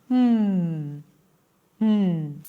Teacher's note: The reason why that happens is that while in Brazilian Portuguese, you do have the letter M at the end of words, it is never pronounced as an M, where you close the lips and you make this nasal sound, M as if you're humming, M.